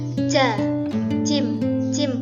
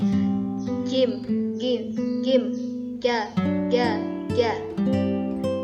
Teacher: Nafasnya tidak keluar, suara tertahan dan mantul. Jadi kalau mengucapkan huruf jim itu nafasnya tidak keluar, bukan ja, jim, bukan seperti itu, tapi jim, ja. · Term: jahar, syiddah, dan qalqalah